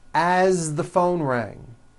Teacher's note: As, you pronounce it with a voiced Z.